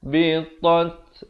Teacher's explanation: Ada bunyi anginnya di akhir ta itu. Bunyi hamas.